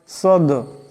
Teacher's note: দাল হলো কলকলা হরফ, আওয়াজটিতে টক্কর খাবে